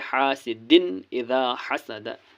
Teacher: پر دو زیر کے بعد حمزہ ہے، حمزہ زیر ای ہے، حمزہ حروف حلقی ہیں، اس لیے یہاں پہ نون کی آواز کو ظاہر کر کے پڑھنا ہے بغیر گنہ کے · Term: اظہار